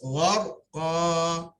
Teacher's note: Ra ditebalkan sebelum baris atas